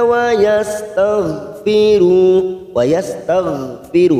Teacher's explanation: hati-hati goin sukun bukan qalqalah, kita tahan. Taghfiru ru kita panjangkan 2 harokat karena kita wakaf di sini.